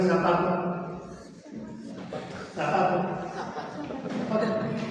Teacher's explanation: Para nosotros la Z prácticamente es una S.